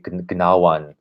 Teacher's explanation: we no longer pronounce the k n or g n sound, those clusters together.